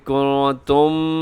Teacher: میم ساکن کے بعد میم ہے تو یہاں پہ کنتم، یہاں ادغام شفوی ہے، میم کے بعد میم آ جائے تو ادغام ہوتا ہے۔